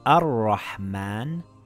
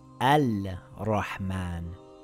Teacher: Yes, it's a sun letter. The lam becomes silent. It reads Ar-Rahman and not Al-Rahman.